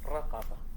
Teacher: Tekanan suara pada ra.